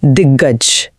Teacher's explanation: जब एक अघोष क का सामना एक सघोष ग से होता है जैसा दिक प्लस गज में हुआ तो क भी दोस्ती निभाने के लिए सघोष बन जाता है और क वर्ग का सघोष रूप है ग इसीलिए शब्द बना दिग्गज।